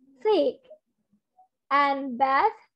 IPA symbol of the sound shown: θ